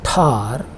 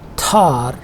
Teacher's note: it is pronounced with a h sound, which is called a puff or aspiration